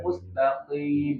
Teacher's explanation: Jadi Qof itu di pangkal lidah bagian dalam tuh paling ujung dari lidah ya. Ee hati-hati ya untuk itu jangan sampai merojol ke tenggorokan.